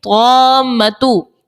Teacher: الف سے پہلے زبر ہے، تو کے اوپر الف مدہ، اور الف مدہ کے بعد یہاں پر میم کے اوپر تشدید سکون اصلی موجود ہے. تو یہاں پر مد لازم کا قاعدہ لگے گا اور 6 حرکات کی مقدار تک مد لازم کو کھینچ کر ادا کرتے ہیں